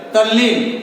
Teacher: त या द के बाद अगर ल आवे तो त या द का ल हो जाता है, यानी त द भी जो है वो ल में बदल जाएगा।